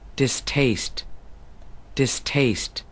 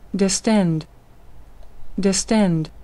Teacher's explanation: Cụ thể là âm S thuộc về hình vị dis, trong khi âm T thuộc về hình vị taste. Do đó, âm T trong từ distaste, distaste sẽ được bật hơi, trong khi âm T trong từ distend, distend không được bật hơi